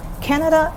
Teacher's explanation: bit difficult canada is first tone plus four and six so it's one high tone plus two low tones but as i said the fourth tone is the lowest compared